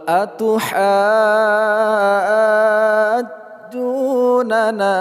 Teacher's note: Ha panjang dulu enam harakat, terus setelahnya kita tasydidkan huruf jim. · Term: Mad lazim mutsaqqol kalimi